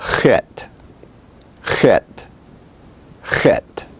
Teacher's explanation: Chet is like the Chi of Greek. It is said a little bit further back than the Gimel.